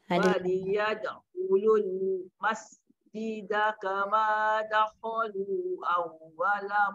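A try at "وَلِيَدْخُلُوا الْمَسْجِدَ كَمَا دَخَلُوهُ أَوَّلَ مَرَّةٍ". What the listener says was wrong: marrah tinggal hu dakhulu hu awwala marratin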